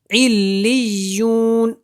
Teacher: وقف میں نون کو زبر ختم کریں گے